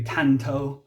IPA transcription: tʰanto